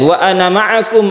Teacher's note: ana itu dipendekkan apabila kita wasol.